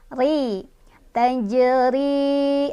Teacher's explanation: Ri-nya dia juga punya atau dibaca secara tipis atau tarqiq ya karena ro-nya berbaris kasrah. Ri. Tajri.